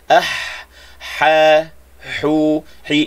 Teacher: ha ini huruf ha di tengah halqum, ha pedas